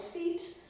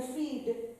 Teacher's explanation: if you say the unvoiced consonant as opposed to the voiced consonant, like feet would be different than feed.